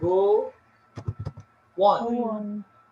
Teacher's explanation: Nah, go on-nya ini itu connection word. Antara go dan on itu disambung ada kata W di sana.